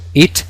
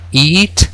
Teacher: podemos diferenciar sonidos: it, que es corto, y la palabra eat, que es más largo